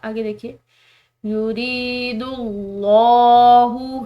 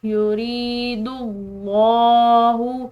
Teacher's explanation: آگے دیکھیے یرید اللہ، را کے بعد یا ساکن ہے تو ہم اس کو پڑھیں گے ایک الف کی مقدار لمبا. یرید اللہ، لفظ اللہ کی لام موٹی پڑھی جائے گی کیونکہ اس کے پیچھے والے حرف یعنی کہ دال کی پیش ہے. تو لفظ اللہ کی لام 2 صورتوں میں موٹی پڑی جاتی ہے، جبکہ اس کے پیچھے والے حرف پر پیش ہو یا زبر ہو.